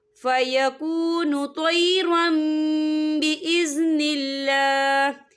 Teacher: हम तनवीन को मीम के साथ मिलाकर पढ़ेंगे और यहाँ पर मीम का तलफ़ुज़ होगा और यहाँ गुन्ना भी होगा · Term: इक़लाब